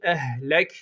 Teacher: kalkale var Kaf kalın okunacak